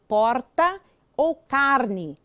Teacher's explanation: uma inovação do português brasileiro é o r caipira às vezes tão intenso que parece valer por dois ou três